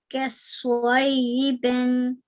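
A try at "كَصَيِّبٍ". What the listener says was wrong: But this sad produce a round sound, but don't add a hint of a W sound in there or a wow sound. Kasayyi bin. Kasayyibin.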